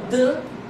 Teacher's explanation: começava com o som dan, né, que era uma oclusiva vozeada, alveolar